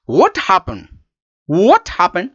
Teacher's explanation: happened is with falling tone